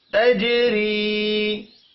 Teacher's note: جیم ساکن پر قلقلہ کریں گے، اور را کو زیر کی وجہ سے باریک پڑھنا ہے